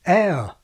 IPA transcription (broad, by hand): ɛə